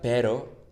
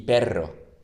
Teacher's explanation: But when the R is in the middle of the word, it's just a normal, more soft one.